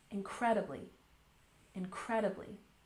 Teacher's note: Let's stress the second syllable.